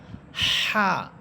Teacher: হা এটা হচ্ছে জিমের মত হা। এই হা এর মাখরাজ হচ্ছে কন্ঠনালীর মধ্যখান। অর্থাৎ গলার মধ্যখান। যেখানে আলা জিহ্বাটা থাকে ছোট একটি জিহ্বা ঐ স্থান থেকে হাফটা উচ্চারিত হবে।